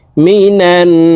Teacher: এই নুন তাশদি নুনের সাথে নাকের বাঁশি থেকে তিন সেকেন্ড পরিমাণ গুন্নাহ করে ধরে রাখবো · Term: ওয়াজিব গুন্না